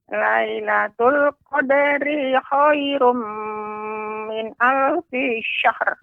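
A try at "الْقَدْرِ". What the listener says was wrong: Ya, untuk qadari tadi terasa panjang Nenek. Seharusnya pendek. Lailatul qadri khairum min alfi syahr. Alfi syahr. Nah, jadi pengucapannya syahr. Syahr. Pengucapannya syahr. Iya, jadi pengucapannya tidak langsung syahr, tidak, tapi syahr. Syahr. Syahr. Tapi V-nya tidak boleh panjang, Nek. Min alfi. V-nya pendek.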